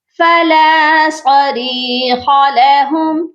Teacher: صاد کو موٹا کریں گے اور ری کو ایک الف کی مقدار لمبا کر کے پڑھیں گے کیونکہ اس کے ساتھ یا مدہ ہے۔